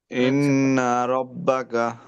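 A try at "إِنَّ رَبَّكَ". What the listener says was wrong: ইন্না এর মধ্যে লাম্বা না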